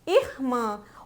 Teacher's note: o som está saindo pelo nariz e tanto pela boca